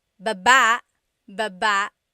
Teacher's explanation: Emphasis is on the second syllable.